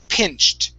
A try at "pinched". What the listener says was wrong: Okay, now give me a T.